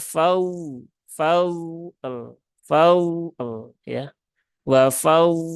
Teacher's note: Jadi huruf dot tidak mantul. Ya, huruf dot tidak boleh mantul karena dia tidak ada sifat kolkolah dan lamnya disukun